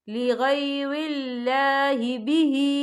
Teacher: یہ اللہ کا نام باریک پڑھا جائے گا کیونکہ اللہ کے نام سے پہلے زیر ہے